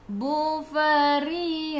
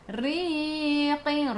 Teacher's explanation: Ra baris bawah kena baca dengan nipis, senyum